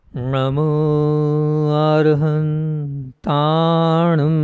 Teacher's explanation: ना दांत ना जीभ ना तालू ना कंठ सिर्फ नाक से निकलेगा म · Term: अनुस्वार